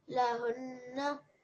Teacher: You have to make a different sound. Yep, so you're going to make that nasal sound from your nose, the ghunna.